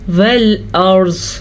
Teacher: والارض را بھی پر پڑھیں گے کیونکہ را ساکن ہے تو پیچھے زبر ہے